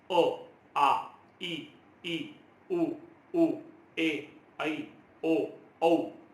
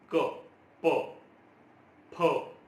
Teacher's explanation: स्वरांच्या बाबतीत कुठेही हवेचा मार्ग अडवला जात नाही. हे इथे कुठेही आपले होठ बंद होत नाही. क, प, फ याचा उच्चार जेव्हा आपण करतो, व्यंजनांचा उच्चार जेव्हा केला जातो तर व्यंजनांच्या उच्चारामध्ये कुठेतरी हवेचा मार्ग अडवला जातो आणि दोन गोष्टींचा समावेश होतो.